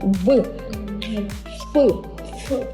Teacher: як саме вони промовляються нижня Губка прижимається верхніми зубками